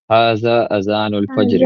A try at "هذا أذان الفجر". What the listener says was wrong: اچھا دیکھیے، ایک ہاذا اور ہاذا، زا اور ذال میں تھوڑا سا فرق ہے. اوکے، ہاذا اس میں جو ذال کی آواز آئے گی وہ زبان کی نوک سے آئے گی.